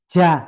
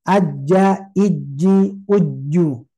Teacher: Ja ini tidak boleh menghembuskan nafas